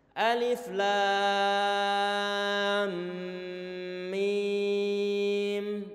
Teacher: bacaan lam kita panjangkan 6 harokat, mim kita panjangkan 6 harokat. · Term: mad lazim